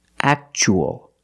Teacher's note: we see T-U-A as a second syllable. So the T is pronounced ch-ch